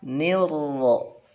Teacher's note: Yang ro-nya, huruf ro-nya kalau yang fathah tebal. Ni-nya tipis, ro-nya tebal.